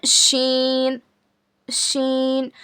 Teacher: It is pronounced when the middle part of your tongue touch the upper पैलेट. यानी हमारी जो जबान का बीच वाला हिस्सा है, किधर लगाना?